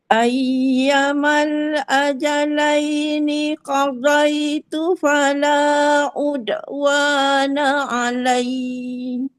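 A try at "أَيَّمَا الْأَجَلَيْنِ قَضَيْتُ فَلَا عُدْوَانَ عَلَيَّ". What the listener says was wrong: Alai tu dia kena baca pendek je. Sebab dia sabdu, kita cuma tekankan sikit saja.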